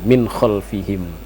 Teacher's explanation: Kemudian min khalfihim, nun mati bertemu dengan kho, itu adalah hukumnya adalah izhar. Nah, nun mati bertemu dengan kho dinyatakan bunyi minnya